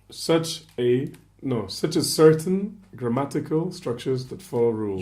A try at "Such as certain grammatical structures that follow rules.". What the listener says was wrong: You cut your noun and adjective. Don't split it. This is one of your major problems reading, that you're not doing the chunks. you split the two.